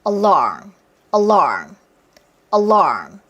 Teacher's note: 중간에 강세 있는 걸 처리하기가 쉽지가 않아요.